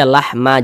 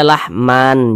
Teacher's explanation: maka tanwinnya dirubah menjadi fathah, maka fathatainnya dirubah menjadi fathah. Jadi dibaca lahma, jangan dibaca lahman, jangan, tapi dibaca lahma, dipanjangkan 2 harokat, mad iwad.